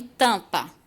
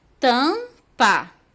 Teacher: O M aí, quando ele vem depois da vogal, ele forma um dígrafo, porque eu não falo ele, eu apenas nasalizo o som do A. Eu modifico um pouco o som do A, eu não falo A, eu falo an